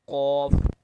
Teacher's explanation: comes out from the root of the tongue and the soft palate